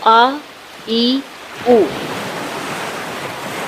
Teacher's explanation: حمزہ منہ کے خالی حصے سے ادا ہوتا ہے، یعنی حمزہ ایسے نہیں بولا جاتا، آ کر کے بولا جاتا ہے، آ، ای، او۔